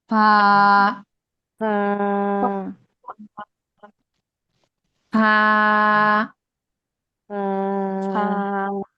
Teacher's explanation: উপরের দুই দাঁতের সঙ্গে নিচের ঠোঁটের পেট লাগবে